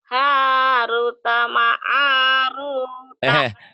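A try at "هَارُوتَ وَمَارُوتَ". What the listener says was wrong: Kok ma'arut wa ma? Haruta wa ma. Wa maruta. Lagi.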